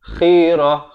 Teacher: Khirah, makhrajnya di hujung kerongkong.